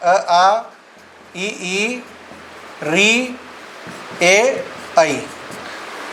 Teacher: ये वो स्वर है जिनका उच्चारण करने पर होठों की आकृति गोल नहीं होती। वो कहलाते हैं अोलाकार स्वर। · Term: अगोलाकार स्वर